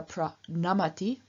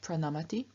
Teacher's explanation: So, for example, in pra nam, to bow forwards or simply to bow, we have a third person singular pra namati with the n having changed into a retroflex n after the r in pra